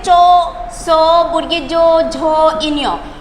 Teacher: তালব্য বর্ণ অর্থাৎ জিহ্বার সাথে তালুর স্পর্শ ঘটে, তাই সেই বর্ণগুলোকে বলা হয় তালব্য বর্ণ